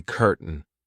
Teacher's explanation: in the British version my tongue doesn't even make an attempt to hit my teeth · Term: glottal stop